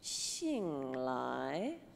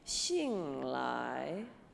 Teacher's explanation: We're going to go down and then up again like a question mark. So, and the X is going to be said like an SH, like a sh sound.